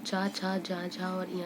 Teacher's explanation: ठीक है, तो ये पूरे 25 जो है वो स्पर्श व्यंजन है। और ये तालव्य व्यंजन चा, छा, जा, झा, इया को हम स्पर्श संघर्षी भी बोलते हैं